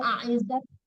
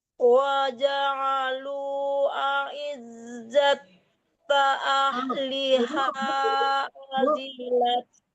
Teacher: Jangan aizat, itu ta yang Ibu tasdidkan. Yang bertasdid itu zai, ditahan di ainnya.